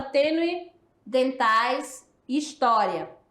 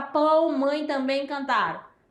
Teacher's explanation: então é nasal a saída de ar pelo nariz e pela boca